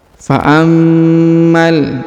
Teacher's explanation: huruf ma ditahan dan ditekan ya, karena terdapat tanda tasdid